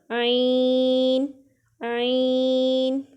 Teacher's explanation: عین حلق کے درمیان والے حصے سے اٹھے گا